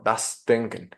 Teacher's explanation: Y aquí sería un ejemplo de cómo tenemos la S entre una vocal y luego una consonante sonora, como la es la D en esta posición, pero la S no se ve asimilada a una consonante sonora. Entonces aquí se mantiene como sorda